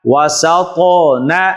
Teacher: زبر و سین زبر طا ست وسط نون زبر ن، وسطن، تو حروف قلقلہ میں سے ہے، اس لیے تو کو ظاہر کر کے پڑھا جا رہا ہے